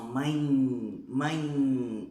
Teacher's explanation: O tio nasaliza, manda o som pro nariz.